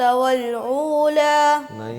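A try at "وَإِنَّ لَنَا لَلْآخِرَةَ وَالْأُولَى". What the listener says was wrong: उला नहीं उला है हमजा के साथ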